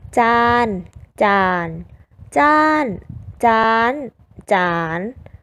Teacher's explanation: 5เสียงคือเสียงสามัญเสียงเอกเสียงโทเสียงตรีและเสียงจัตวา